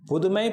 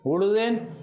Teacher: சொல்லின் முதலில் உகரம் வந்தால் அதை அடுத்து வருகின்ற உகரமும் இதழ் குவித்தே உச்சரிக்கப்படுகிறது. புதுமை பூ சொல்லின் முதலிலே இருக்கிறது, அதை அடுத்து அதே போல் இன்னொரு உகரம் இருக்கிறது புதுமை.